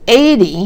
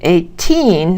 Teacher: 80 has the stress first, and 18 has the stress on the second syllable.